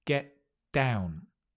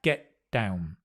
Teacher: Notice the T, you drop.